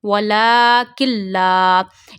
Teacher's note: So in lam and ra we don't do gunna. It means we will not stretch while reading while joining kaf with lam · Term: idgham